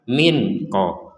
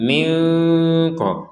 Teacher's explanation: Jadi jangan sampai min ko itu jelas itu. Jadi harus disamarkan min ko antara jelas dan dengung.